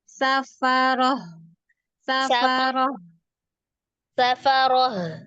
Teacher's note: ada getaran di al-halqinya bagian bawah ya, saya tenggorokan bawahnya.